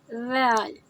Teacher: ذال، زال کو ہم اسی طرح ادا کرتے ہیں جیسے ہم نے فا کو ادا کیا۔ ذال کو ادا کرتے ہوئے ہماری زبان اوپر کے دانتوں کے پیچھے لگتی ہے